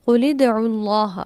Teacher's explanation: لام ساکن تھا اور اس کے بعد دال بھی ساکن ہے. ملا کر پڑھنے کے لیے کیا کیا؟ لام کو کسرہ دے دی.